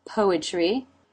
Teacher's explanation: There's the R consonant sound. And then the corners of the lips pull back into the E as in she sound.